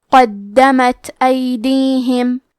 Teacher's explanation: ابدا بما۔ کلمت قدمت میں قاف کو موٹی آواز میں پڑھیں گے، دال پہ تشدید ہے تو ہمیں یہ حرف کو 2 حرف کے برابر پڑھنا ہے۔ آخری میں تا ساکن ہے تو ہم تا کو ہمزے سے پڑھیں گے۔